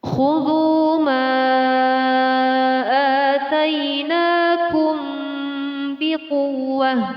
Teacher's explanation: Di sini terdapat hukum bacaan mad jaiz munfasil. Cara membacanya dengan memanjangkan 2 alif 4 harokat, kira-kira sebanyak 4 sampai 5 ketukan.